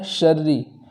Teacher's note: شرّی کے اندر را مشدد کو باریک پڑھیں گے